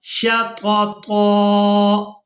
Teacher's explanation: اس طوا کو ہم نے ایک الف مقدار کھینچ کر ادا کرنا ہے کیونکہ ہم یہاں پر وقف کر رہے ہیں